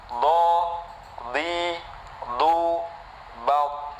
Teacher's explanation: sisi lisan bertemu dengan geraham atas, yaitu mengeluarkan huruf dod